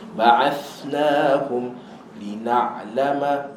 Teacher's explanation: Thada ada hams, lepaskan angin dia dulu. Ba'athnahum lina'lama.